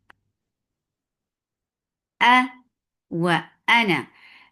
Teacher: The sound is sharp and short. Wa makhraj of waw circling lips